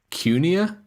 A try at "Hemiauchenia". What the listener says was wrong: There's no U.